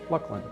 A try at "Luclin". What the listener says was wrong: No, there is no LUCLIN in there. That is only LUCLIN. It's not LUCLIN. There's no luck.